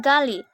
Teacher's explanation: Bunyi G dengan ciri-ciri hidup, oral, velar, plosif